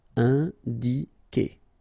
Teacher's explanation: when you get this Q and U after, and obviously a vowel, then U is not pronounced at all, okay, so it's K here, you don't pronounce the U.